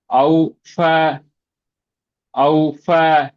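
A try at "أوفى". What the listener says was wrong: அவு ஃபே நீட்டுங்க. அவு ஃபே.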